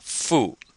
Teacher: so it sounds like fu fu and this is fourth tone